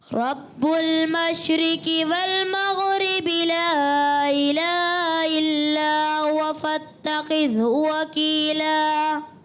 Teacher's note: شین میں بھی کلکلا ہو گیا، غین میں بھی کلکلا ہو گیا